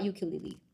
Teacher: But for the beginning sound of ukulele, it starts with kind of Y.